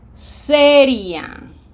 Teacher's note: The I is weak, the A is strong, they remain together. We cannot separate them.